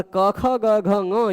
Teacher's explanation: ये पांच वर्ण ऐसे हैं जिनका आभ्यंतर प्रयत्न स्पष्ट है और उच्चारण स्थान कंठ है। यानी ये पांचों वर्ण एक दूसरे के सवर्ण है।